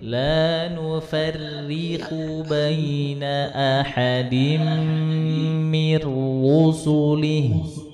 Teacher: La nufarri, tipis Bu, jangan ditebel-tebelin. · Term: huruf ra